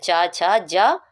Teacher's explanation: च वर्ग हमारा तालव्य ध्वनियों के अंतर्गत आता है